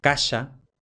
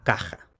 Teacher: lo que al final pasa es un paso de prepalatal, sh, por ejemplo, casa, a velar, por ejemplo, caja.